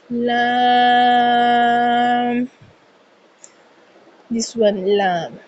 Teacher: زبان کا کنارہ اور دونوں دانتوں کی جڑ کے تالو کی جانب والے حصے سے ادائیگی کی جاتی ہے